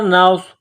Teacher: نون کو صاد کے ساتھ ملانا ہے. صاد میں سیٹی کی آواز پیدا کرنا ہے. صاد کو موٹا کرنا ہے